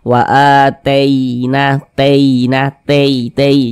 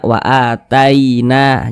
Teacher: kalau huruf Lin yang terjadi pada huruf yasokun kita harus berhati-hati ya ketika mengucapkannya jangan sampai condong ke huruf e